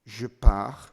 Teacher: japa you lose the consonant completely there's no t it's disappeared the whole ir has disappeared as well as the consonant in front of it